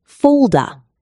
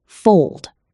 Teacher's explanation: you are adding extra vowel sounds to the ends of words. You said folda instead of fold.